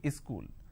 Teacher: they add another syllable they pronounce this as school · Wherever there is a word that starts with the s sound, they add a e in front. So instead of saying school, they say school.